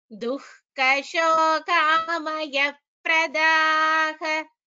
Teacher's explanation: Kha is Mahaprana, so kha should be chanted clearly.